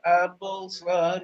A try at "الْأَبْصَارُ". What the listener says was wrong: Abaso, kurang panjang. Abaso, soalnya panjang.